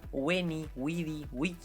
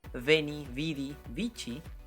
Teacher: la ce en el clásico siempre tiene un sonido oclusivo